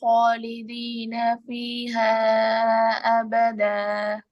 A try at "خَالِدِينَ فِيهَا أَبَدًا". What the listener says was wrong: ஈஹா அபதல் நீட்டுறது போதாது.